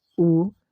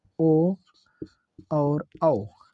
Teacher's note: जिनको बोलने में हमारा मुख वृत्त के समान बन जाए वह क्या है? वृत्त मुखी होगा। वृत्त मुखी में 4 स्वर आते हैं।